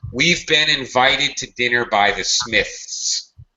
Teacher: Notice I'm taking forever to say that word. I'm dragging out the Smiths. I have no choice because I can't reduce this.